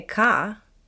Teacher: If you say car with a clear R, your accent is considered rhotic. If you say ka with no R, it's non-rhotic.